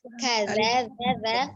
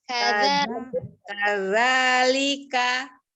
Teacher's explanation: ujung lidahnya ada di seri bagian atas